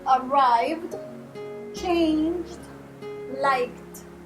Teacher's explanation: i don't pronounce the e because none of these verbs end with a t or a d